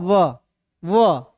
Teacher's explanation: देखो इसमें दोनों सट रहा है, होठ भी सट रहा है और दांत भी सट रहा है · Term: दंथोष्ठ